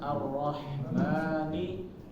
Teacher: Hi dua-duanya tipis jadi jangan ditebelin salah satunya